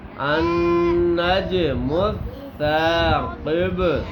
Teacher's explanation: اور جیم پر قلقلہ ہوگا